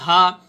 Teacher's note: ناظرین حلق کے 3 حصے ہوتے ہیں، انتہائی حلق، وسط حلق اور ابتدائی حلق. اب حلق کا وہ ایک حصہ وہ ہوتا ہے جو سینے سے جڑا ہو، جہاں سے ہا ادا ہوتا ہے